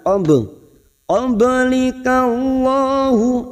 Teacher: bak sukun yang mati asli di tengah kalimat qalqalah sugroh kita pantulkan